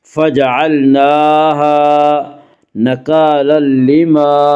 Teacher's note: نکالا لما میں ادغام بلا غنہ ہوگا